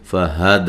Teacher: ہا کو اس کے مخرج سے نکالنا جو کہ اقصی حلق ہے، حلق کا سب سے نچلا حصہ ہے، سینے کے قریب والا